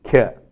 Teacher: palatalized aspirated voiceless velar plosive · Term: palatalization